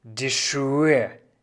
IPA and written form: diː ˈʃuːə (die Schuhe)